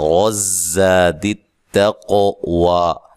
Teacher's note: ضروری ہے۔ خوئی، را کو موٹا ادا کرنا ہے، غزاد التقوی، را کو موٹا ادا کریں اور زا پہ زور کے ساتھ ادا کریں زا کو